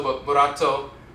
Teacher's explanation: the tongue taps the roof of the mouth once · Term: rolling R